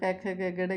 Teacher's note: जिन वर्णों का उच्चारण करते समय प्राणवायु कंठ के थोड़ा ऊपर अर्थात कोमल तालव्य से टकराती है उन्हें कोमल तालव्य वर्ण कहते हैं।